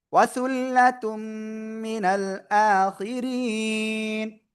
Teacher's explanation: মিনাল, হামজা খালা জবর এক আলিফ টান, খজের খির, ওয়াজের রি এক আলিফ টান, নুন জবর না, আখিরিনা থেমে পড়লে 3 আলিফ টান হবে আর নুনে সাকিন, আর র চিকুন আওয়াজ।